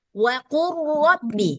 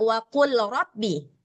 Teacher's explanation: Nah, jadi nggak wa qul rabbi. Nah, semuanya lamnya melebur ke huruf ra. Seolah-olah si lam ini nggak ada. Langsung ke ra.